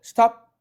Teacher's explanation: 아예 입 다물었네요. 개방을 안 시켰어요. 파열을 안 시켰어. 폐쇄만 시켰어. 공기를 입안에서. 그래서 P를 우리는 폐쇄음이라고 말하기도 하지 않습니까?